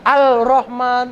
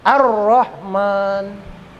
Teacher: Ar-Rahman itu mad tabi'i, panjangnya satu alif atau dua harokat. Ar-Rahman, alnya nggak kebaca ya, nggak Al-Rahman kan nggak gitu, langsung Ar-Rahman. Ini namanya Al-Samsiyah, alnya nggak hidup.